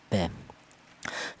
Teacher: Huruf ba keluarnya huruf berasal dari kedua bibir yang rapat